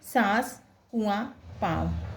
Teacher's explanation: अनुनासिक स्वरों का गुण है जब इसका उच्चारण होता है तब हवा मुख के साथ नाक से भी निकलती है